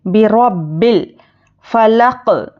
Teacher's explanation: برب الفلق با زیر بھی حرکت ہے، جلدی پڑھیں گے، اور وا پر زبر ہے، روا کو موٹا پڑھنا ہے اور جلدی پڑھیں گے، اور با پر تشدید ہے تو تشدید کو سختی سے پڑھیں گے